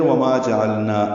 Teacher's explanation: اس نا پہ مد نہیں ہے، یہ مد اصلی 2 حرکات ہی لمبا ہے